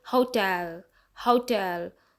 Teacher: टू syllables हैं, एक हाउ है और दूसरा टेल, तो यहाँ पे टेल पे स्ट्रेस दिया है, तभी हम बोलेंगे हाउ टेल, हाउ टेल। तो टेल जो है वो थोड़ा लॉन्ग जाएगा, उस पर दबाव जाएगा और स्ट्रेस जाएगा।